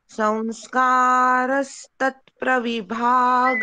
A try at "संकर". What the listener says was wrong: अच्छा बोला पूनम मैडम, लेकिन ना यहाँ संस्कार नहीं है, यहाँ है। संकर संकर ऐसे बोलना है, संस्कार नहीं बोलना, ठीक है?